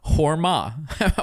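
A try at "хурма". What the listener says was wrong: It's not whore. It's hur. Hur. You have to roll. It's a roll R. It's not a soft R.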